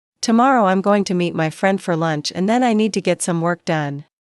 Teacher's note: Tomorrow, I'm going to meet my friend for lunch and then I need to get some work done. Stress tomorrow. Meet, friend, lunch, and work. The other words should be softer and faster. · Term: natural rhythm of English